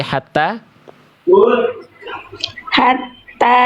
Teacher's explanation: Oke, lanjut dulu saja dari hatta hatta tanya kepanjangan tanya hanya fathah tegak tidak ada alis ya jadi cukup dibaca dua harakat